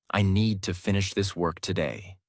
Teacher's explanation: Need, finish, work are strong. Other words are softer. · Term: stress important words